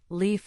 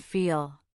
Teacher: For leaf, the sound is forward and light. For feel, the sound is darker, resonating at the back. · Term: two L sounds